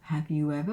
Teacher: We have a linking W, between the vowel sounds.